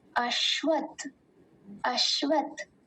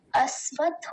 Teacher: अश्वत, अश्वत नहीं कहेंगे, अश्वत्थ, अश्वत्थ। और तालव्य शकार का ध्यान देंगे, बहुत बार बोलने में ये सकार हो जाता है